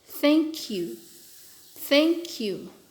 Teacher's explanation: Ini vowel ketemu eng, maka dia akan menjadi nasalized.